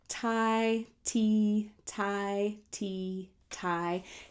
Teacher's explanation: if you say thai and t back and forth you can see that tai is a little further back in the mouth